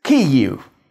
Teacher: After vowels, this Ukrainian /ʋ/ sound shows up as a very short /u/. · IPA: [ˈkɪjiu̯]